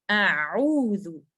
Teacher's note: आ हमजा light letter है, इसको मैं आ नहीं पढ़ूंगी, मैं इसको पढ़ूंगी एप्पल साउंड पे